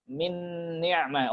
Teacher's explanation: Nun ketemu nun ya. Udah langsung ke nun yang kedua saja fokus karena sama. Oke, berarti idghamnya sempurna ya. · ternyata ada dengungnya. Maka kita katakan berarti idgham bi gunnah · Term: idgham kamil